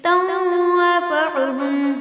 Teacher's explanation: فما تنفعهم شفاعت الشافعین۔ تنفعهم نون ساکن کے بعد فا جو حروف اخفا میں سے نون کی آواز کو ناک میں چھپا دیں گے،